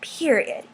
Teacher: it's not creaky voice it's kind of similar but a kind of a quivering of your voice · you freeze on it like and you sort of emphasize it also my voice goes up you'll notice for sort of no reason at all um that just it means emphasis in this slam poetry Community